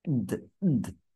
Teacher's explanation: দয়ের সঙ্গে কোনো স্বরধ্বনি উচ্চারিত হয়নি, তাই এর নিচে আমি একটা হর্ষ চিহ্ন ব্যবহার করেছি। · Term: বদ্ধ অক্ষর